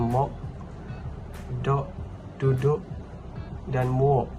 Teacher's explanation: konsonan vela K dan G yang terletak pada posisi koda atau di akhir kata dalam sebuah kata akan dikeluarkan sebagai konsonan hentian glotis